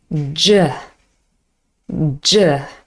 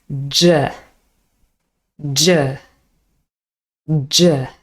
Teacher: this sound is a voiced alveolar palatal affricate sound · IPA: dʒ